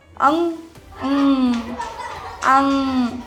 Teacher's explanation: जिस वर्ण के उच्चारण में हवा केवल नाक से निकलती है, उसे कहते हैं अनुस्वार। जैसे अंग, अंग केवल नाक से आ रही है।